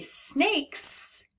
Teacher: When I feel my throat, no, it's not buzzing when I make k, k, k, which means it's unvoiced, which is why when we say snakes, we make the S sound because it's following that unvoiced K